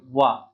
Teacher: प फ ब भ म और उसके अलावा जो है त वर्ग में त थ द ध न फिर यहां पर सारी चीजें आएंगी तो व जो है इन पांचों वर्गों से अलग है तो इसका वर्ग जो है स्थान क्या हो जाएगा अभी मैंने बताया था दंत और ओष्ठ व दंत और ओष्ठ इसका प्रयोग करके हम बोल रहे हैं